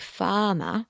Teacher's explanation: when the Queen speaks, she drops her r's saying farmer like